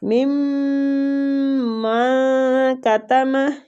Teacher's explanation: ادھر میم کے ساتھ میم جب ہم ملائیں گے تو ادھر ادغام شفوی ہوگا، ٹھیک ہے. اس رول کو ادغام شفوی کہتے ہیں، میم کے بعد جب میم مشدد آتا ہے غنہ کے ساتھ ہم نے ادغام کرنا ہے.